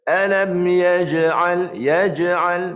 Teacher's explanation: Huruf jim tak ada angin. Dia suara. Qalqalah tu suara. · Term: huruf jahar